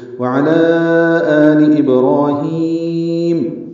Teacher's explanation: اب یہاں پہ بھی مد ہے، مد منفصل، علی پر آگے حمزہ آ رہا ہے، ابراہیم، با ساکن پہ قلقلہ، را پر 2 حرکات لمبا ہے، ہی آئے مدہ ہے، 2 حرکات لمبا ہے، میم پر زبر ہے، جلدی پڑھیں گے۔